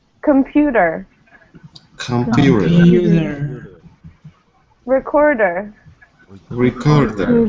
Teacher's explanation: The stress here is in the middle syllable.